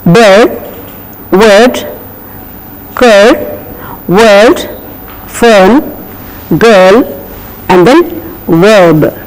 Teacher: But the R has to be silent. It cannot be pronounced openly.